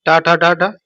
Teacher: टा जो आपका मूर्धन्य होता है